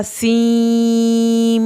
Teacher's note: میم کی جو شد ہے اس کو پڑھا جائے گا سیم، یعنی آپ نے فوراً اس کو سین کے بجائے سیم، میم کے ساؤنڈ میں لے جانا ہے، اور میم کے اوپر آپ نے رکنا ہے. 1 الف کے برابر دیر لگنی ہے میم کی شد کی وجہ سے، پھر آپ نے میم اس کی مد واجب پڑھنی ہے.